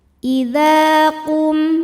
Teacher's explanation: mim sukun dibunyikan secara jelas disebut dengan idzhar syafawi karena mim sukun menghadapi huruf selain mim dan ba yaitu huruf ta. Mim sukun ini kita bunyikan dengan m jelas. · ada alif didahului baris fathah maka huruf dzal panjang dua harakat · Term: mad tobi'i dzohiri